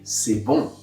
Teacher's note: If I combine an O and an N together, this is going to sound like So the sound is created by a round shape on my lips, like an O, and then I add the congested nasal sound of N, like in c'est bon.